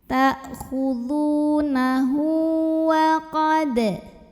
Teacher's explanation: Dan huruf hidup setelahnya bukan hamzah ya, melainkan ini waw. Maka cara baca hak domirnya kita panjangkan 2 harokat saja. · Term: mad silah qasirah